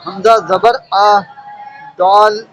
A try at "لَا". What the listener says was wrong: حمزہ تھوڑی ہے، لام ہے. لام ہے. لام ضاد کے ساتھ جڑا ہوا ہے. لام زبر لا. لام زبر لا.